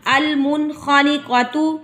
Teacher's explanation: نون ساکن کے بعد خا آ گیا، یہاں پر بھی اظہار ہوگا یعنی کہ گنہ نہیں ہوگا